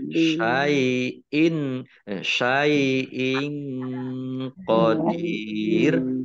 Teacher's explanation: Syai'in qadir. Kasrah tanwin bertemu dengan huruf qaf bacaan ikhfa dibaca samar-samar